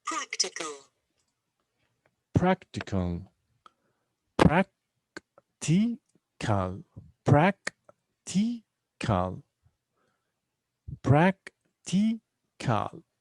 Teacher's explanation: Three syllables. And the stress is on practical. On the first syllable here.